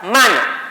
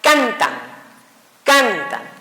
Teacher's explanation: la palabra grave o llana, su posición fuerte o el sonido fuerte de la palabra va a ser en la penúltima